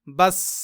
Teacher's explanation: इसमें कलक नहीं होगा क्योंकि सीन रूफे कलक में से नहीं है